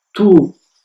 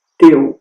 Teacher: nos dois casos os lábios terminam redondinhos para a frente